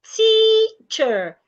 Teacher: if the word ends in e r or o r, the e r or the o r should be articulated as a sha. Again, the shua is a weak, lazy, closed sound.